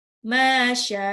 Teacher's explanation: Masya, mimnya 2 harokat, shinnya 6 harokat. Allah, lamnya 2 harokat lagi.